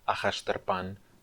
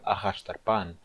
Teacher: a sílaba tônica é a última sílaba, é a sílaba pan